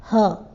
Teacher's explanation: काकल्य वर्ण के उच्चारण में मुख गुहा खुली रहती है। उच्चारण करके देखें आप, ह, और वायु बंद कंठ से झटके से बाहर आती है, इसलिए इन्हें काकल्य वर्ण कहते हैं।